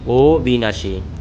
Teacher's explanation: নিয়ম সাত অ সমান ও অর্থাৎ যেকোন শব্দে থাকা অবর্ণের পরে যদি রসী দীর্ঘ রস রসই ঋ ক ও মূর্ধনস এর সংযোগে গঠিত যুক্ত বর্ণ বর্গীয় জ ও ইয় এর সংযোগে গঠিত যুক্ত বর্ণ অন্তস্থ জ এবং জফলা থাকে তবে উচ্চারণ করার সময় অ বর্ণের উচ্চারণ ও বর্ণের মত হবে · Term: অ এর উচ্চারণ